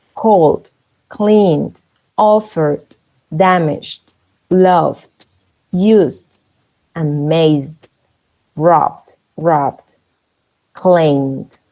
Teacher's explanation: cuando el verbo termina así en una L, en ese sonido de esa L, la ED se pronuncia como una D. Es como si borráramos la E.